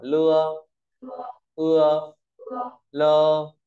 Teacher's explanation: Vận mẫu ưa đứng sau thanh mẫu lưa, tưa, nưa và mua, ta đọc thành ơ. Đối với bốn trường hợp này, đọc hỏi lưa, ưa, lơ, thì lơ có nghĩa là rồi.